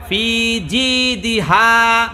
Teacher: হায়ের মধ্যে আপনি হায়ে হুত্তি করে ফেলছেন, গলা ফুলে বলেন। ফি জি দিহা বলেন।